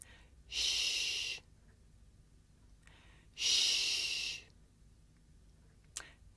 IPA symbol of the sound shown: ʃ